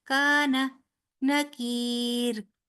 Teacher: کان نا لمبا نہیں ہوگا، کا لمبا ہوگا کیونکہ الف مدہ ہے